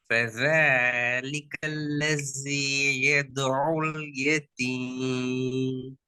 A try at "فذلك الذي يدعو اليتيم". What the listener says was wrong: இல்ல இல்ல இல்ல இல்ல இதுல நீங்க ஐன ஏலியாக உச்சரிக்கிறதுக்கு ட்ரை பண்ணிட்டீங்க ஐன் என்ற எழுத்த ஐன் எழுத்துக்கு முன்னாடியே நீங்க ஓதுறதுக்கு ட்ரை பண்ணிட்டீங்க எனவே உங்களோட நிறைய இடங்கள் ஐனுக்கு மாறிட்டு இப்ப இல்ல அந்த ஸ்டார்டிங் பல فذلي அல்ல فذلي அவ்வளவுதான் என்று போறது பல فذلك الذي